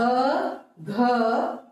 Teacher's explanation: घ को बोलते समय वायु मुंह से अधिक निकली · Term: महाप्राण